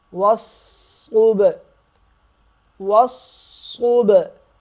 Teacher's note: صاد کو موٹا کریں گے، سخت پڑھیں گے، اور با پہ قلقلہ کریں گے، یعنی آواز کو ہلائیں گے۔